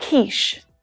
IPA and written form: kiːʃ (quiche)